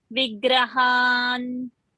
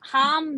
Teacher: The Anuswara you should say na.